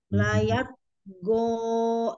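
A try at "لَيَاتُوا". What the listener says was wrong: bukan go, jangan bentuk harokat. Layat togo, harokat empat kali, hanya dibuka.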